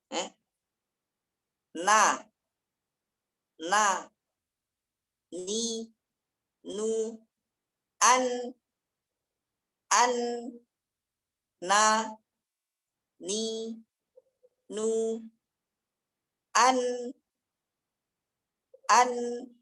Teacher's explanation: Kalau nun, yang tarful lisannya aja. Yang lengkok itu aja. Sikit. Dan dia, ma'alisatil asnanil ulyama. Gusi atas. Dekat gigi atas nih.